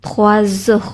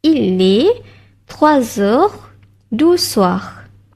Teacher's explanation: next perkataan, dia start dengan huruf vokal, so kita kena buat bunyi Z.